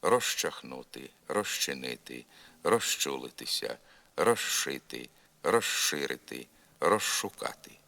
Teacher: звук з у префіксі роз перед глухими шиплячими ч ш змінюється на Ш